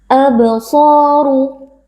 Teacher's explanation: karena ada Alif yang sebelumnya berharakat fathah kita baca panjang dua harakat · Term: Mad thi'i